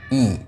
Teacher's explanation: dalam kondisi kasrah maka Hamzah wasalnya dibaca dengan kasrah pula I seringkali Hamzah di sini dibaca dengan miring ihdina tapi harus dibaca dengan vokal I